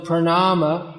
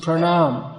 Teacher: in some Indian languages, prominently in Hindi, usually the last vowel is dropped. So the word pranama becomes pranam.